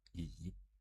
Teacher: In Chinese, the pronunciation is also called yi, but it's more like the third tone going down and up